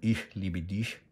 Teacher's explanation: É só você pegar a língua, levantar a língua lá atrás e encostar no céu da boca e fazer o som chiado. · esse CH aqui tem um sonzinho assim, meio chiado